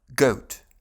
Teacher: А в британском акценте этот дифтонг уезжает вперед, поэтому это называется goat fronting. Язык начинает от центральной позиции во рту, от гласного шва Затем рот слегка закрывается, а язык движется или назад O, или вперед O.